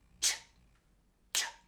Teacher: instead of using your voice, j, j, j, you use no voice